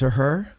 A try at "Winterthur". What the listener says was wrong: Winteriter. an extra T in there that's pronounced.